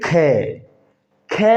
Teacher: ख ख में ज्यादा सांस खर्च होता है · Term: महाप्राण